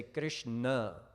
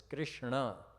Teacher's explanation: the retroflex nasal sound or na